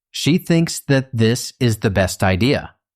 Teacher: It also has a nice rhythm. Best idea has the stress on best, and then a fall on idea